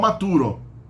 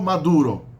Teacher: maturo maturo maduro né moneta em italiano Moneda então T entre o t entre vogais do latim vira d ou seja consoante surda vira sonora no espanhol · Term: sonorização das consoantes intermediárias surdas